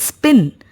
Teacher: in the word spin, the same p is pronounced without the puff of air, that is written as p.